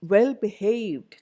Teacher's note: second part that gets the stress now only learner first part in compound adjectives and compound verbs you give the stress to the second part